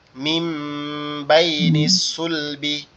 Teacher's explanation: এখানে নুন সাকিনকে মিম দ্বারা পরিবর্তন করতে হবে। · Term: ইগলাবের নিয়ম